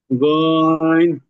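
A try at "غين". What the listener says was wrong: গইন না, একবারে গইন, তিন আলিফ, একবারে গইন।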